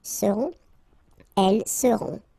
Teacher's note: final T not pronounced, and then you get this nasal